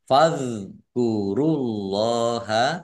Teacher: shadnya ada tasdidnya lam fathah berdiri matobihi panjang dua harakat fadkurullaha dalal sukun ini bukan Qalqalah jangan dipantulkan · Allahnya dibaca tebal karena harakat di depannya domah